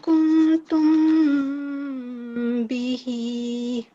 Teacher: Meme we will be prolonging for 2 seconds because it is followed by a ba, and this is ikhfa meme sakin.